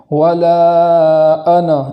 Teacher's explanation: آگے والی آیت ہے ولا انا عابد ما عبدتم، تو یہاں پر بھی مد کرنے کے بعد حمزہ کو خوب جھٹکے کے ساتھ ادا کریں گے